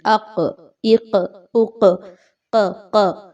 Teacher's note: یہ جو ق کی ساؤنڈ ہے، یعنی زبان کا آخری حصہ اوپر سافٹ جگہ سے لگ رہا ہے، اگر آپ غور کریں تو نرم حصے سے لگ رہا ہے۔ زبان جب اٹھ رہی ہے یا چپک رہی ہے تو نرم حصے کے ساتھ لگ رہی ہے، سخت حصے کے ساتھ نہیں لگ رہی، ہارڈ پیلٹ کے ساتھ نہیں لگ رہی، یاد رکھیے سافٹ حصہ، سافٹ پیلٹ کے ساتھ۔ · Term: قاف